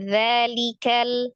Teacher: kalau pertamanya za, ujung lidahnya dikeluarkan sedikit